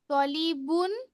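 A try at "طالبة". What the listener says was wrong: লিবুন লেখা আছে নাকি? আরেকবার দেখো তো খেয়াল করে। তলিবাতুন, কারণ খদিজা তো ফিমেল, তার জন্য তলিবাতুন লাগবে, একটা লাস্টে গোলতা লাগবে।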